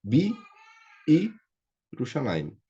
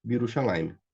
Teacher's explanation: Então o Shevá do Yud some.